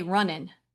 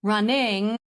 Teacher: you can feel the back of your tongue hitting the soft palate up there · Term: ng sound